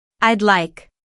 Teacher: when native speakers talk fast, I'd like can sound like one smooth word.